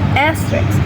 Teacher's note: The R sound disappears because S and R are too similar in this position.